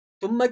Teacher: ثم کی میم مشدد ہے، ثم یہاں غنہ کیا جائے گا